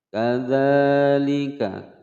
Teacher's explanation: kadza panjang dua ketukan mulhaq mad tabi'i